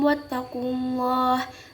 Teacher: Pada lapad Allah ini hukum bacaannya yaitu tafhim, tebal, di mana ada lapad Allah setelah huruf yang berbaris domah.